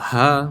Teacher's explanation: when you pronounce it is just a breath there's absolutely no obstacle you don't it's a breath as it comes out you don't